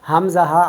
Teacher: اقصائے حلق سے حمزہ ہا ادا ہوتے ہیں 2 حروف